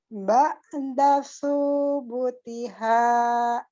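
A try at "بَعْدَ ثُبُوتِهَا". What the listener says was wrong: Yang panjang bukan su-nya tapi bu-nya. Coba lagi.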